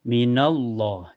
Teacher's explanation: Lahum minallah minallah ini di lafaz Allah dibaca tebal ya. Karena sebelumnya berharokat fathah. Jadi dibaca tebal.